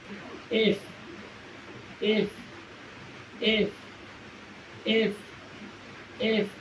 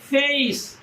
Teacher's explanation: উপরের পাটির দাঁত নিচের ঠোঁটকে স্পর্শ করবে এবং কিছুটা বাতাস ঘর্ষণের সহিত জোরে প্রবাহিত হবে।